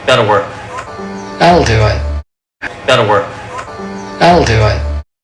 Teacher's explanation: That all. Esta es la contracción de that y will. Cuando pronuncian estas dos palabras juntas, cuando las fusionan, simplemente vas a escuchar that all.